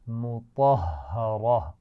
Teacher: طا بھی موٹا ہے اور اس کے بعد ہا پر شد ہے، تو دو دفعہ پڑھیں گے، پہلے طا سے ملائیں گے پھر زبر کے ساتھ پڑھیں گے.